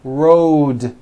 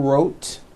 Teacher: rode also has a voiced d ending